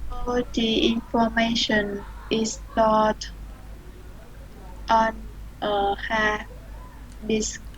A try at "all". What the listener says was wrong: Rồi em đọc cái chữ ELL, em đọc là O luôn giùm anh. All